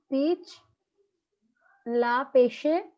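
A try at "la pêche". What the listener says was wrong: Pash. Last e does not. last e So don't say pesh. Just pash.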